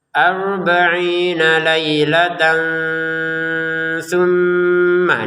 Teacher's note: Harakat tanwinnya bertemu dengan tsa. Maka kita baca dengan samar ya. arbaina lailatan tumma ini mim bertasydid dibaca dengan dengung. · ini mim bertasdid dibaca dengan dengung.